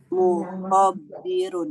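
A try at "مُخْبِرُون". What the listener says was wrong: Salah. Enggak usah pakai tasdid. Enggak usah pakai tasdid.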